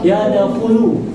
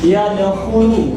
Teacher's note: Kha itu keluarnya di mana? Di pangkal tenggorokan. Keluarnya di pangkal tenggorokan.